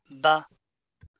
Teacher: the start of vocal cord vibration comes before the release of stop closure. So the voice onset time need to be reported as a negative number.